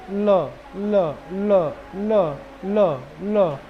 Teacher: जाएगा ही उधर इसीलिए उसको क्या बोलते हैं दांत के पास ल मतलब दंत क्योंकि दांत के पास जा रहा है दांत के नीचे आ रहा है